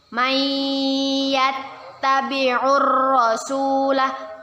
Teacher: kita masukkan huruf nun sukun Nya kepada huruf ya dengan berdengung dan ditahan dua harokat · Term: Idgham Bighunnah